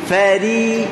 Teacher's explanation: huruf ra baris bawah kita akan baca dengan tipis. Fari ujung saja. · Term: Tarqiq ra